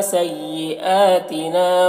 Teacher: سیئاتنا کھڑا زبر ہے، 1 الف کے برابر کھینچ کر پڑھیں گے